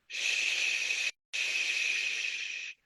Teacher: it's a very long SH sound, like you're soothing a child or a baby. The only thing to keep in mind is that it's an SH with a slight U.